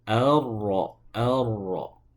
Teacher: Jadi sifat rnya, sifat takrirnya ro itu dilemahkan ya, ditipiskan tidak diucapkan secara tebal dengan cara membalikkan ke punggung lidah.